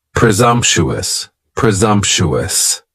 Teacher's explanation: presumptuous has four syllables and the stress is on that second syllable and the S almost sounds a little more like a z